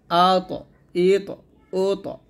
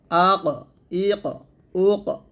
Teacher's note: কফ এবং ত এই দুইটা কলকলা মোটা করে কলকলা করতে হবে